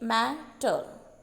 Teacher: Trochee में भी 2 syllable है. द फर्स्ट जो है पहला वो स्ट्रेस सिलेबल होता है और दूसरा अनस्ट्रेस होता है